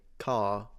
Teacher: Even my accent is non-rhotic, so I don't pronounce the R as a R, for example, when it's in between consonants or at the end of a word.